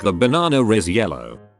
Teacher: British people add an R sound in between words that end in a vowel and start with a vowel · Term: intrusive R